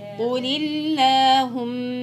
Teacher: قل اللهم كلها مرققة بس القاف المفخمة